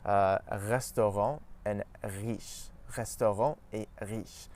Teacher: in French we pronounce it at the back of our mouth close to the uvula. So when we push our tongue back a bit, it forces our tongue to pronounce the R sound further back in the mouth. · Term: French R sound